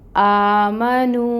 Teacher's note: تو واو مد کا رول ہو رہا ہے، 2 کاؤنٹس لمبا پڑھیں گے۔ آمنو، اور نو دونوں کو برابر رکھیں گے۔